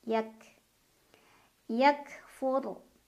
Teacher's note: Kaf punya sifat syiddah tertahan suaranya bunyi ka dulu baru keluar Hames angin